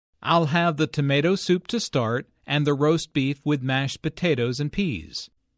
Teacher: Notice that tomato soup, roast beef, mashed potatoes, and peas are stressed because the food order is the important information here. Notice also that tomato soup, roast beef, and mashed potatoes are compound words.